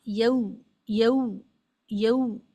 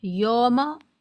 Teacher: सही आवाज उ आवाज है और गलत आवाज ओ है।